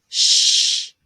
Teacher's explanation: sh is a continuing sound and the air continues to flow through your mouth your tongue is behind your top teeth but there's enough room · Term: fricative